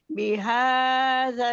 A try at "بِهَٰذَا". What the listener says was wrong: बिहा को आपने स्ट्रेच क्यों किया है?